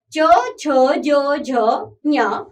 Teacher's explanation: च वर्ग के व्यंजन बच्चों तालू से स्पर्श करते हैं